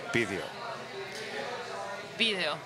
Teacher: So the V in Montevideo is pronounced B, though. V is like more like video, B.